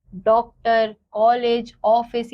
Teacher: इसका उच्चारण आ तथा ओ के मध्य की ध्वनि के रूप में होता है। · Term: अदध्र चंद्र